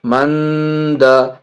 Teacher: میم نون زبر من، دال زبر دا. نون ساکن کے بعد دال یہاں حرف اخفا میں سے، یہاں پہ ناک میں آواز چھپائیں گے